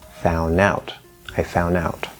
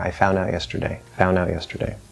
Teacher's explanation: you can drop the d and say found out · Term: n d plus vowel rule